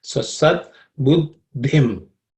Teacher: the second letter in that compound consonant is aspirated one, just the same as dhana. That the is the same the here.